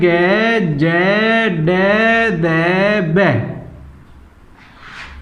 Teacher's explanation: इसका मतलब ये होता है सघोष का मतलब घर्षण खाते हुए, अल्पप्राण का मतलब कम मात्रा में, व्यंजन घर्षण खाते हुए हवा कम मात्रा में मुंह के रास्ते बाहर आती है। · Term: सघोष अल्पप्राण व्यंजन